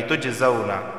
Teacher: قلقلہ ہوگا کیونکہ جیم حروف قلقلہ میں سے ہے تو آواز مخرج سے ٹکرائے گی، تجزون۔ الا ما، الف سے پہلے زبر آیا ہے، یہاں بھی الف سے پہلے زبر آیا ہے، ایک ایک الف کے برابر دونوں کو کھینچ کر پڑھا جائے گا۔